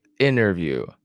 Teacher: or you can say interview and skip the T.